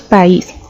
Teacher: la pronunciamos en dos sonidos o golpes de voz por separado · País tiene el acento en is, por lo tanto esa es la tónica y por lo tanto está cumpliendo esa condición para formar un hiato.